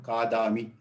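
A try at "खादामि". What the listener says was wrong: Khadami. Kha Mahodaya, not ka, kha. Uttamam.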